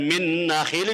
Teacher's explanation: hukumnya dibaca idgham bihunna, artinya masuk dengan mendengung